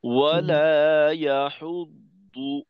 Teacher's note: দদের পেশে ঠোঁট গোল, শুরুতে গোল, মাঝে খোলা, আবার শেষে গোল।